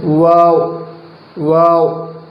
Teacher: دونوں ہونٹوں کے کنارے مل جاتے ہیں اور بیچ کا حصہ کھلا رہتا ہے · واو ان دونوں ہونٹوں کے کنارے مل کر، دیکھ رہے ہوں گے آپ، دونوں ہونٹوں کے کنارے مل کر اور بیچ کا حصہ کھولا رہتا ہے